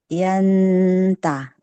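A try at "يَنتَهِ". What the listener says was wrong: Nah, gitu Bu.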